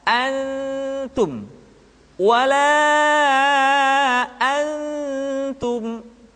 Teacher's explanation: Ketemu dengan ta misalkan, tidak dibaca antum, tetapi posisi lidah sudah berada pada makhraj huruf ta. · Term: ikhfa